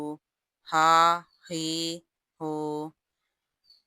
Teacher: ہاں حلق کے انتہائی حصے سے ادا ہوتا ہے، یعنی حلق کے آخری حصے سے۔